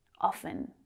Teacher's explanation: notice that i didn't pronounce the t in often